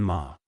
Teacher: Fourth tone, sharp and falling